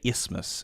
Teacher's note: they don't really pronounce the th